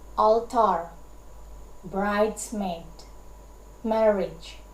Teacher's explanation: one stressed syllable but followed by one unstressed syllable